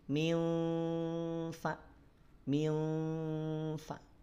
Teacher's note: di satu sisi terasa ada getaran Nun sukunnya nya tapi getaran Nun sukunnya tidak jelas tidak sejelas izhar nah itu yang dimaksud dengan Ikhfa menyamarkan bunyi nun sukun atau